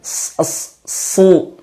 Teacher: jelaskan sifat sofir atau aliran suara tajamnya.